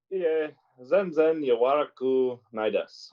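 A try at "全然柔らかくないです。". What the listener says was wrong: Yawara kaku. The ka is still there. Yawara kaku.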